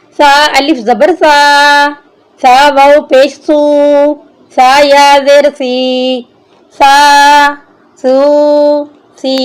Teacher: یہاں پر سا جو ہے یہ نرم حرف ہے، اس لیے ہم نے اس کی جب ادائیگی کرنی ہے تو نرمی سے کرنی ہے۔ اپنے اوپر والے اور نیچے والے دونوں دانتوں کے درمیان جب زبان کو لگائیں گے تو پھر سا کی صحیح ادائیگی ہوگی۔ سا پر سیٹی کی آواز نہیں آنی چاہیے۔